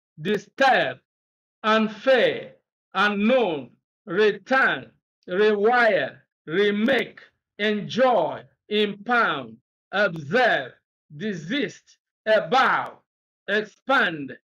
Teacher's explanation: you leave the prefix and you stress the second syllable